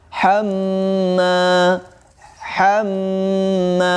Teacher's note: di situ ada mim yang bertanda tasydid, maka di situ dihukumi gunnah dan ditahan 2 harokat ya.